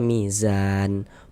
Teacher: Karena berwakaf di huruf yang nggak dibaca panjang, hurufnya kita sukunkan sehingga kita baca mizan.